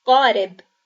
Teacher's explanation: Now we are going to read the word qarib. You can see that the A is pronounced as a long one again because we have the Alif. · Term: long A